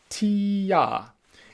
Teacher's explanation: as you say tia your tongue starts high and then it drops down low tia try it with me tia if you're not sure about · my tongue dropped as i went from e to a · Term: tongue voicing